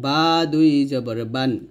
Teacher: এই বা টা দুই ঠোঁট মিল করে আমরা উচ্চারণ করব